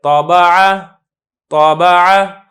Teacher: جو طا ہے اس میں اگر آپ غور کریں گے تو آواز کو تھوڑا سا ہلایا جائے گا، طابع، طابع، بلکہ بعض اوقات تو اس کا محسوس بھی نہیں ہوتا۔ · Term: قلقلہ